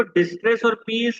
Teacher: they are sharing a sibilant consonant sound, but using slightly different vowel sound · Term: slant rhymes